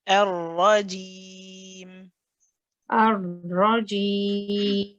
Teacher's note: remember to keep the voice running for the ra